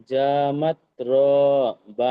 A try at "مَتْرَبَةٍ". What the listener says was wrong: র টান নেই। متربة। আও মিসকিনান যা মাতরাবা। أو مسكينا ذا متربة। أو مسكينا ذا متربة।